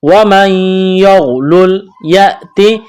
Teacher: نون ساکن کے بعد یا ہے، یہاں پر ادغام کریں گے، غنہ کریں گے، غین کو موٹا کرنا ہے۔